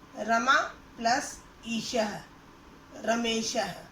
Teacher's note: उसी तरह रमा के अंत में आ है और ईशः के शुरू में ई है। आ और ई दोनों मिलकर ए बना है, तो इसीलिए यह दोनों मिलकर रमेशः शब्द बन गया।